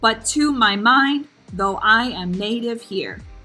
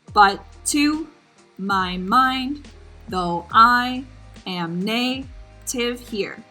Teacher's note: Unstressed, stressed, unstressed, stressed, so on and so forth.